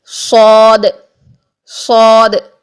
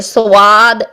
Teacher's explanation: صاد کے لیے بھی ہے کہ واو کی ساؤنڈ نہیں آنی چاہیے، سواد ایسا نہیں کرنا ہے. · صاد میں ہم پیچھے سے زبان کی جڑ کو اوپر اٹھائیں گے اور او کی ساؤنڈ لے کر آئیں گے، موٹے حروف والی او کی ساؤنڈ لے کر آئیں گے.